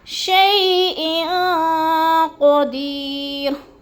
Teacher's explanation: اور شیئن پہ غنہ کریں گے، آواز کو ناک میں چھپا کر پڑھیں گے، جیسے شیئن قدیر، قدیر کو بھی تھوڑا سا کھینچنا ہے، یا مدہ ہے۔